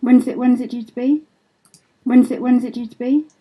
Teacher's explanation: when's it due to be is rhythmically produced that's to say it sounds like there's roughly equal beats between those stressed syllables